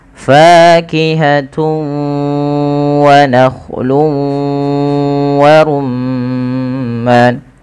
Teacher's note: Cara membacanya yaitu memasukkan tanwinnya kepada huruf wau. Karena idgham itu artinya memasukkan bighunnaah disertai dengan ghunah. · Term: idgham bighunah